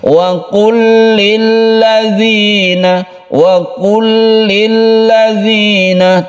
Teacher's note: tentunya tidak didengungkan ya, biasa saja membacanya karena lam itu tidak mempunyai sifat dengung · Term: idgham mutamatsilain